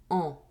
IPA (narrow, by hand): ɑ̃